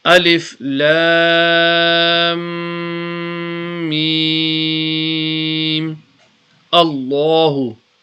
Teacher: we also do ghunna on the meme because meme is mushaddad · You can either read it as a separate alif lam mim, stop here, and then you put a zabar on the alif here, make it into a hamza, and then read Allahu. Remember, when the name of Allah has a zabar before it, the lam will be read with a thick tone. So that is what you call tafkhim, yani thick tone.